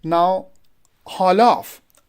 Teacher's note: Haul would be stress, off would be unstressed.